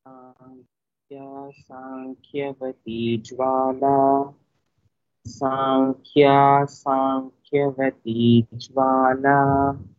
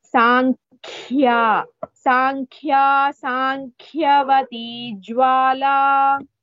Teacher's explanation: In both words, Kha is Mahaprana.